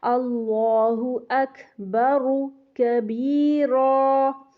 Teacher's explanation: را پہ پیش بھی پڑھیں گے اور را کی پیش کو موٹا کریں گے